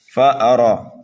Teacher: الْآيَةَ الْكُبْرَىٰ، فَأَرَىٰ، دیکھیے فا اور حمزہ کو جلدی پڑھیں گے، را کو ایک الف کے برابر کھینچیں گے اس لیے کہ کھڑا زبر ہے اس کے اوپر، را کو پر کر کے پڑھنا ہے